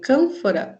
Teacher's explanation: pode ser uma nasal labiodental